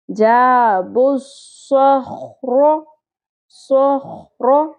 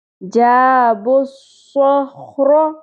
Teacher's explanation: پیش جو ہے وہ ڈائریکٹلی صاد کے ساتھ مل گئی ہے، واو الف الف لام یہ سارے سائلنٹ ہو جائیں گے ، لکھنے میں آئیں گے لیکن پڑھنے میں نہیں آئیں گے۔